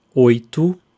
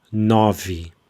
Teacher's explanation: we've got the closed o sound, oito, and we've got the open o sound, nove